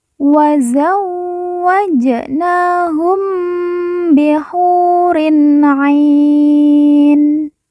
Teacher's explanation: mim sukun atau mim mati bertemu dengan huruf ba, kita baca dengung.